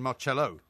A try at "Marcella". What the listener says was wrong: No, Marcella. double L-A. Just looked it up on Marcella. Marcella.